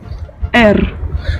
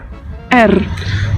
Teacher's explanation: Р. Donc vous avez entendu un R roulé un peu à l'espagnol. Petite particularité, il s'écrit comme notre P.